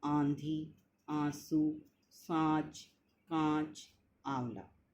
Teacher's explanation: इनके उच्चारण में क्या है, हवा जो है नाक और मुंह से निकलती हैं